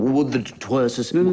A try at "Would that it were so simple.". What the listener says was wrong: No, you seem to be lingering. It's interminable, the were. I'm wondering when it'll end. And we shouldn't be wondering, should we?